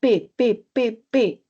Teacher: Entonces, cuando hablamos de sonidos orales, además vamos a hablar de otros aspectos, como por ejemplo, cuando hay una obstrucción total, cuando digo P, P, P, P, los articuladores se pegan, hay una obstrucción total. Esos sonidos, en base al modo, van a ser, además de orales, oclusivos.